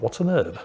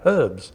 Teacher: they just don't pronounce the h at the beginning of the word herb in america